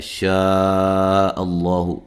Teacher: یہاں لفظ اللہ کو موٹا ادا کریں گے، اس سے پہلے زبر ہے